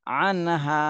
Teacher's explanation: নুন সাকিনের পরে ইজহারের হরফ আসছে, এই জন্য এই নুন সাকিনে স্পষ্ট করে পড়তে হবে।